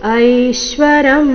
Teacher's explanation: ಐ ದೀರ್ಘ ಬಂದು ನಂತರ ಅದರ ಮೇಲೆ ಆಘಾತ